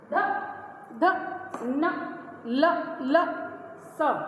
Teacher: त थ द, दांतों से निकल रही है हवा, ध ध न ल ल स, दांतों से निकल के आ रही दंत, दंत माने दांत।